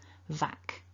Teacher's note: k is not voiced. It's just a bit of air popping out of the mouth.